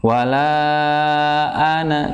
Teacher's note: a-nya ada di makhrajnya, ada di tenggorokan bagian bawah.